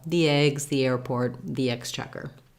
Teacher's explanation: We just naturally use a true E in the word the when the next word starts with a vowel.